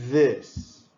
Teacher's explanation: The hard pronunciation, that's this one, it uses the sound of your voice like in the word this.